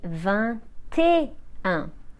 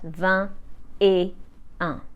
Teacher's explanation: as 20 ends in a silent T and et starts with a vowel, we carry the T at the start of the word et. This is why we say 21 and not 20 et 1.